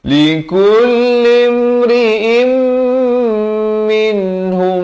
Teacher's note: mim mati bertemu mim, dengungkan 2 harakat